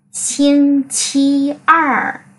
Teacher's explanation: Er này cần phải uốn lưỡi lên khi mà đọc. Mà đọc mạnh xuống dưới vì nó là thanh 4.